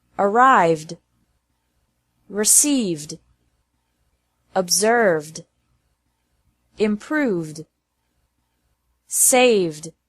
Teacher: It's also pronounced like D after verbs ending with a V sound.